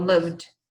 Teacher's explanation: E o V, ele tem uma vibração aqui na sua corda vocal. Então, a gente chama isso de voiced, que tem vibração.